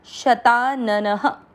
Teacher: अ की मात्रा इसलिए विसर्ग को पढ़ेंगे ह